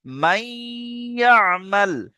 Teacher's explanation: তাই নুন সাকিনকে ইয়ার সাথে মিলিয়ে একালিফ গুন্না করে পড়তে হবে। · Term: ঈদগামে নাকিস